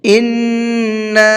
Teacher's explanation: نون کے اوپر تشدید ہے تو یہاں پر غنہ کریں گے۔ للہ، یہاں اللہ کے لام کو باریک کر کے پڑھیں گے۔